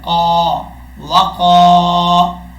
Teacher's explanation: قاف کے آگے الف ہے، ایک الف کی مقدار اس کو لمبا کر کے پڑھیں گے. دو نقطوں والا جو قاف ہوتا ہے وہ ہمیشہ فل ماؤتھ پڑھا جاتا ہے، یعنی موٹا پڑھا جاتا ہے. قاف الف زبر قا وقا. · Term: دو نقطوں والا قاف